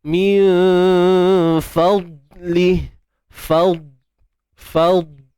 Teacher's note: huruf dad tebal tetapi tiada lantunan